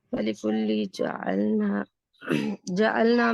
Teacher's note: जअलना में जो अलिफ है वो बारीक पढ़ा जाएगा क्योंकि इससे पीछे हरूफ मुस्तालिया नहीं है।